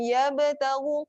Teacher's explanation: qalqalah sughra, lantunan yang perlahan, yabtaghu lantunan yang kecil, taghu tebal, tebal dua harakat.